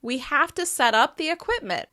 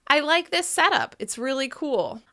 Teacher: As you can hear in the verb version of this phrasal verb, I am stressing up.